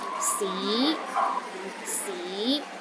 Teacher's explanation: in cantones the first tone is high and steady c c the second tone start with a low pitch and Rises to a high pitch